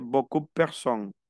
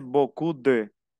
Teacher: Beaucoup de personnes. Aquí no pronuncian la P, no pronuncian la E, pero pronuncian la D, ahí se une.